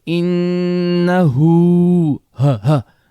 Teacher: it comes from the bottom throat, the ha.